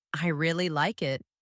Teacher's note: you stress the word really to show emotion